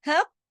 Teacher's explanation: कॉफ जो है मोटा भी पढ़ना है, सख्ती से भी पढ़ना है। क्यों? इसलिए कि काफ जो है वो हैवी लेटर है, हैवी लेटर की फैमिली से है।